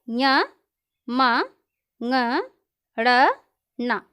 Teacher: इसमें है ञ म ङ ड़ न। ये जो पांचों वर्ण हैं ये नासिका के द्वारा उच्चरित है, इन्हें अनुनासिक भी कहा जाता है